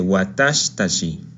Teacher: La letra shi de watashi omite su i por cuestiones fonéticas y se dice watashitachi